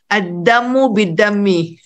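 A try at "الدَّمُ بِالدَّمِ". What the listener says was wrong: Ad-damu bid-dami. Damun mimnya tanpa tasdid ya. Ad-damu. Ad-damu bid-dami. Mengapa damun mimnya tanpa tasdid? Karena semula adalah damia. Damia yadma. Nah, lalu masdarnya adalah damun. Asalnya damayun. Semula adalah damayun, lalu jadi damun. Damia yadma, damayun. Damayun.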